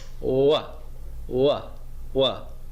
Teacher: my lips are rounding but they're not really making contact with each other